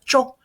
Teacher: the o is nice and round. You make that little o with your lips